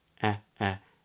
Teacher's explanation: Then we get the diphthong A, which is made with spread lips, A, and then the tongue rises a little higher